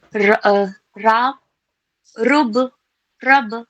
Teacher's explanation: रा पर जबर या पेश हो तो इसे मुंह भर कर पढ़ी जाएगी